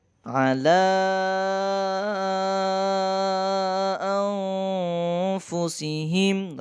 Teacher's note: ala setelah fathah bertemu dengan alif di sini atau hamzah, maka dibaca panjang 6 harokat atau 3 alif karena hukum bacaannya mat jaiz munfasilnya.